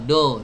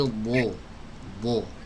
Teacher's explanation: Jadi bo ini ada di pinggiran lidah. Ya, tadi saya dengar seperti huruf dal dikasih o, do, bukan do tapi bo, pinggiran lidah.